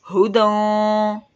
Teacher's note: ہا کی آواز سینے سے ادا ہوگی